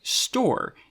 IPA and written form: stɔːɹ (store)